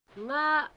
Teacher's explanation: The vowel part of the first nga is level, this part, but the second phonological word ngara is low rising.